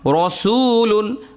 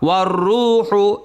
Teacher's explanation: দেখুন রয়ের মধ্যে জবর হওয়ার কারণে রটা মোটা হলো, আবার রয়ের মধ্যে পেশ হওয়ার কারণে র মোটা হলো